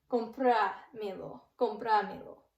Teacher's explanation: we count the last 3 syllables from the end. So we go 1, 2, 3, accent on me